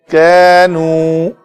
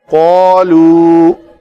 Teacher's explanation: کاف پتلے حروف میں سے ہے تو الف بھی پتلا پڑا جائے گا۔ کینو قالو، قاف کے لیے الف جو ادا کرنا تھا تو ہونٹ اوپر کو اٹھے اس کو پر کرنے کے لیے۔